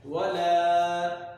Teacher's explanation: لا لمبا ہوگا کیونکہ زبر کے بعد الف ہے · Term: حرف مدہ